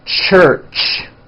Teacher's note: It's a combination of the T sound, t, and the SH sound, sh. When you put these two sounds together, you get a ch, ch. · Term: CH sound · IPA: [tʃ]